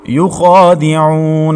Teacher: یخادعون، عین حروف حلقی میں سے ہے، وسط حلق کے درمیان سے ادا کریں گے۔ عین کے بعد واو ساکن ہے، اس سے پہلے عین کے اوپر پیش تو واو مدہ ہے، ایک الف تک کھینچیں گے